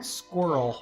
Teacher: We say squirrel like it's one syllable.